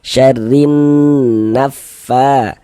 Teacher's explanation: Tanda baca kasrah ini huruf ro dibaca tarkik baca tipis.